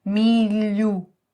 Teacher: The tip of the tongue touches the roof of the mouth, but the side is a little open to let the air through. Milh... Corn, son. · a ponta da língua toca no céu da boca, mas a lateral está um pouco aberta para passar o ar